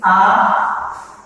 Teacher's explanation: जो स्वर ह्रस्व से 2 गुना समय लगता है, उच्चारण करने में 2 गुना समय लगता है, उससे हम दीर्घ स्वर करते हैं।